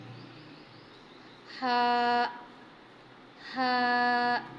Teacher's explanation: یہ ہا انتہائی حلق سے ادا ہوگا